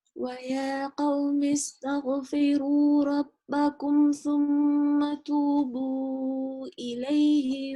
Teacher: So we say the Meem. I sound out the Meem clearly, but I don't nasalize it. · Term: idhar